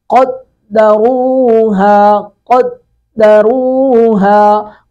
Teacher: قاف کو پر کر کے پڑھیں گے، را کو بھی پر کریں گے